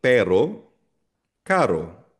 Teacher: yung soft R mabilis na R. Katulog ng tagalog natin na R · R hindi siya exaggerated normal. So ginagamit itong R na ito yung soft R kapag ang R nasa gitna ng dalawang vowels